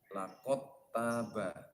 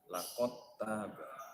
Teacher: dal mati bertemu dengan ta, dalnya dimasukkan ke huruf ta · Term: idgham jinsi